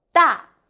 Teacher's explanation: so you need to do from high to low